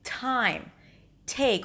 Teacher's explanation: the pronunciation of a T at the beginning of a word, an aspirated T, as in time, take, or the beginning of a strong syllable, as in fantastic.